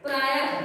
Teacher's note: विसर्ग, इसका विसर्ग जो ये चिन्ह है इसका उच्चारण ह के समान होता है।